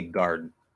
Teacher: because the D is voice and we need to hear that voice, what ends up happening, it is a stop D.